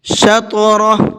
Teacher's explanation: طا کے اندر قلقلہ کریں گے اور ہا کو ساکن کر کے پڑھیں گے